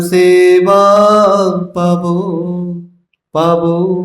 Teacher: बंगाली में क्या है कि जो ब होता है ना, थोड़ा सा हल्का सा ओ की तरह उच्चारण होता है। तो एग्जैक्टली आपको पावो ऐसा नहीं बोलना है, पर ओ की तरफ, ओ की ओर आपका उच्चारण होना चाहिए।